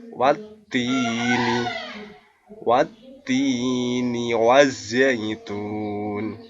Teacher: what's Dini nah ini ada metode ini ada khas roh Kemudian bertemu dengan Ya Sukun dibaca panjang dua harakat